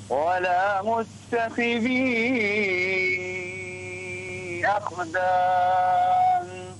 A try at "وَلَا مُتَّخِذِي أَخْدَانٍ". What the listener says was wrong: لا تقلق الخاء أخدان أخدان